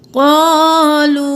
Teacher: قاف موٹا الف مدہ ہے، ایک الف کے برابر کھینچیں